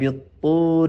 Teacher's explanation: طور میں طا موٹا ہے اور پوری را باریک ہے